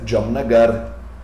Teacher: o último a da palavra é fraco então a gente corta ele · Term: a fraco